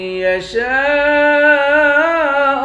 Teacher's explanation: شین کے بعد الف ہے، الف پر مد ہے، اس مد کو 5 الف کے مقدار کھینچیں گے